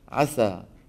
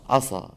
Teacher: اذا فخمت سينه شو بصير عصا